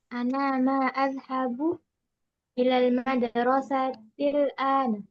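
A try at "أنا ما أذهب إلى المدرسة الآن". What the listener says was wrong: Bagus tercinta.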